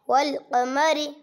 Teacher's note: را زیر کو معروف پڑھے، مجہول آواز سے بچیں. زیر کی آواز نیچے کو جاتی ہے.